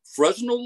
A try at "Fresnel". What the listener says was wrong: A Fresnel. You don't pronounce the S. It's a French word. So you get to pass over several word letters. So it's Fresnel.